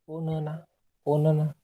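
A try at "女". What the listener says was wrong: हाँ, तो ये ओनाना नहीं रहता, ये ओन्ना रहता है। उसको आप अगर इंग्लिश में लिखने जाओगे तो कैसा आएगा, ऐसा आएगा ना। हाँ, तो वो ओन्ना रहता है।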